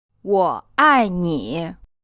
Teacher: This is said with the 3rd tone, the 4th tone, and then a 3rd tone again.